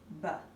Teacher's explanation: Although the sound is also short with one pop of breath, our voice box rumbles or vibrates when we say it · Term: voiced stop